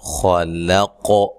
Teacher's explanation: خا کو موٹا ادا کرنا ہے اور قاف کو جو ہے وہ وقف کی صورت میں قاف پہ قلقلہ کرنا ہے، قاف کو موٹا بھی ادا کرنا ہے.